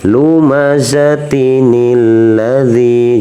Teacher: Jadi nunnya ini berbunyi, dia disambungkan, jadi dikeluarkan, tidak disembunyikan.